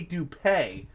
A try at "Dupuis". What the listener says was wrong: No, Dupuis. S silent. It's almost like having a W in there.